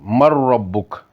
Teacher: اتھے نون نی آواز را وچ مکمل مدغم ہوئی گی اور صرف میم جڑا وا اور را نال ملی گا، نون نی آواز ظاہر نہیں ہونی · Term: ادغام تام